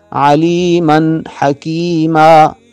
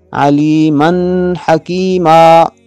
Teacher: نون تنوین کے بعد ہا آ رہا ہے، یہاں اظہار ہوگا، غنہ نہیں ہوگا۔ اس کو غنہ کر کے علیمن حکیما غنہ کر کے پڑھنا غلط ہوگا۔